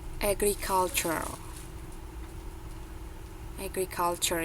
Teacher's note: jadi yang huruf t-nya itu t sounds-nya itu udah enggak terlalu kedengaran